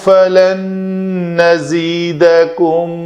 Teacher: نون کا نون کے اندر ادغام ہوا تو نون مشدد پڑھا جائے گا